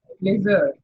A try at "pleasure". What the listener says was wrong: Z nahi. J. Treasure सही बोला. Treasure सही बोला है.